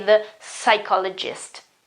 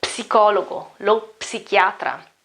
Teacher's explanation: The P doesn't exist in the pronunciation.